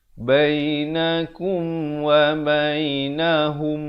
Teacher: Mim mati bertemu mim, dengungkan 2 harakat. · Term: idgham mislain